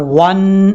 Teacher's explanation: واو کو نون سے ملائیں گے اور نون کے اوپر شد ہے، شد کی وجہ سے غنہ کریں گے